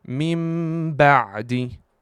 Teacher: I'm totally closing my lips into the makhraj of the Meem while pronouncing the letter Meem. Mim ba'di. And some scholars, as it's written in this book here, says that you have to do a hidden Meem with a small gap between your lips.